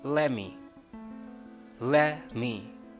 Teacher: नॉट को नॉ बोला तो नॉट येट की बजाय मैं कहूँगा नो येट